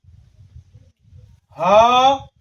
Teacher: ہا، اس کا مخرج ہے حلق کے نیچے والے حصے سے ادا ہوتے ہیں، حلق کے نیچے والے حصے سے ادا ہوتا ہے یہ ہا۔ حمزہ، یہ بھی حلق کے، حمزہ، یہ بھی حلق کے نیچے والے حصے سے ادا ہوتا ہے۔